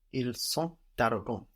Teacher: We also get an S on the end of the adjective there, on the end of arrogant, to refer to them, but we don't hear that S. The TS on the end of arrogant forms one consonant syllable, no, and it's silent.